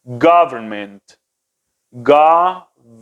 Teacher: Fíjense cómo el primer, como les dije, la pronunciación más fuerte está en la primera sílaba